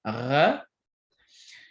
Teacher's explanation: You can also have kind of an R, but further back in your mouth. This becomes a uvular trill.